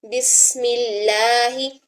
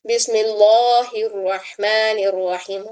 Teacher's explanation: اس میں جلالہ سے پہلے زیر آ رہی ہے میم کے نیچے، تو بھی ہم اس میں جلالہ کے لام کو باریک پڑھیں گے